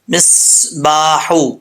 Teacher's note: اور جب یہاں پہ وقف کریں گے تو ہا ساکن ہو جائے گا، مصباح۔ صاد جو ہے یہ فل موت پڑا جائے گا، حروف مستعلیہ میں سے ہے۔ اور اسی طریقے سے آگے جو آ رہا ہے یہ بھی صاد حروف مستعلیہ میں سے پڑا جائے گا، فل موت، مصباح، ٹھیک ہے۔